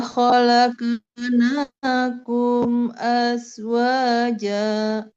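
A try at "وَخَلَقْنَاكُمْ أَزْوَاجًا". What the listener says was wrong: Sedikit, Bu, di kol-kolahnya yang qaf. Qaf itu jadi bulat ketika pantulannya bulat tapi mengalir. Tidak berhenti di qaf. Jadi tidak wa khalaqna, tapi mengalir saja.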